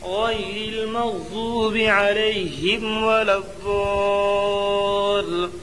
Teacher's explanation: الف لام حروف شمسی غاد کے شروع میں ہیں، اس لیے الف اور لام کو نہ پڑھیں گے بلکہ بعد والے حرف سے ملا کر پڑھیں گے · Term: ادغام شمسی